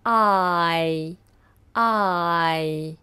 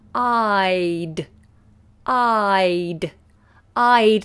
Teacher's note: the word I it's one letter but it's a diphthong it's a nice long sound I notice how my tongue moves I I and then when